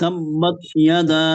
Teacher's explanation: এখানে আপনার মদ আছে, মদ। পরিপূর্ণভাবে আপনি 4 আলিফ টানবেন